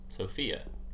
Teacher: I think the the second syllable is the stress syllable